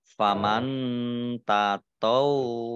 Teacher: nun sukun bertemu dengan huruf ta, bacaan ikhfa dibaca samar-samar. Kemudian wawunya dibaca double, ada tasdidnya.